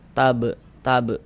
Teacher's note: ini dia masuk kepada qalqalah sugra qalqalah kecil karena dia berada di tengah kata atau di tengah kalimat